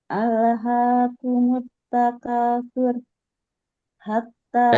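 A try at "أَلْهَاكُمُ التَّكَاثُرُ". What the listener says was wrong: Alhaakumut takatsur. Sur. Roknya ditebalkan lagi. Tur, tahan aja sedikit. Karena ro ini juga ada sifat tawasudnya. Maka tahan satu harokat. Alhaakumut takatsur. Sur. Jangan su-nya yang dipanjangin. Ro-nya yang dipanjangin. Tawasud ro. Sifatnya.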